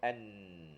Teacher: dia ada suara keluar melalui hidung bila sebut Nun ni tak boleh tidak mesti guna hidung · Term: huruf nun